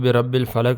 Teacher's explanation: با کے اوپر شد ہے تو ذرا رک کر پڑھیں گے